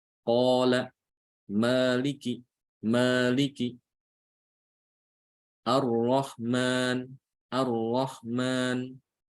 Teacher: Mat asli atau mat tabi'i atau mat dzati ini ukuran bacaan panjangnya adalah dua harokat. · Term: mad asli